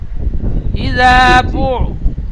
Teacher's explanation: বু টান হবে না, বা আইন পেশ বু জলদি পড়তে হবে।